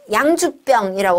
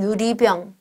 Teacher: 아무 에너지가 안 나오는 그 구간의 길이가 쌍비읍은 비읍보다 훨씬 길어요.